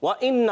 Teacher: وَإِنَّ، واو کی ادائیگی ہوتی ہے ہونٹوں کی گولائی سے، اِنَّ حمزہ خوب ظاہر کر کے پڑھیں گے، اور نون مشدد میں ایک الف کا غنہ ہوتا ہے